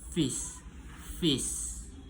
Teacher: [mendengus] itu eh manner of articulation eh freatif udara melewati cela sempit sehingga menghasilkan gesekan · place of articulation labiodental, gigi atas menyentuh bibir bawah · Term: voiceless labiodental fricative